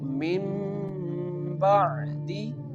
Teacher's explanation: The noon sound change into the mim sound.